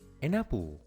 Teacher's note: Si observas bien, realmente no decimos las palabras por separado. An termina con la consonante N y apple empieza con la vocal A. Entonces simplemente los unimos.